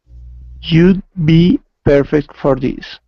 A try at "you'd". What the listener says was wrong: Okay, so instead of jute, it's E-oo, you.